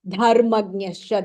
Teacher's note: The dha is mahapranaha.